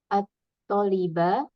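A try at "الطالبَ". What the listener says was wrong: atau liba, tonya agak dipanjangin bacanya ya. Atau liba,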